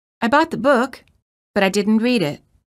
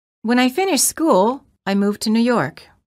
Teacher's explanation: the second sentence contains Rising intonation indicating that the thought has not ended